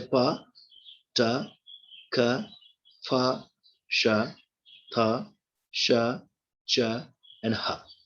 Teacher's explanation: Okay, while producing these 9 different consonants of English, okay, uh, the vocal cords are what? The vocal cords are wide apart. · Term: voiceless sounds